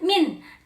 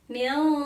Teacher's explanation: Yang kedua contohnya adalah milqab. Kata min di situ dibacanya samar, tidak min, tetapi mil. Mengapa? Karena di situ nun mati bertemu dengan salah satu huruf ikhfa, yaitu qaf.